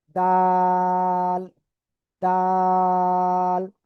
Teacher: এটার নাম হলো দাল। জিহ্বার আগা উপরে দুই দাঁতের গোড়ায় লাগান, লাগিয়ে আপনি এটা তিন আলিফ টেনে উচ্চারণ করেন